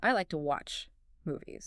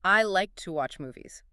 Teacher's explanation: The two just disappears into a tiny flick of the tongue and a relaxed breath.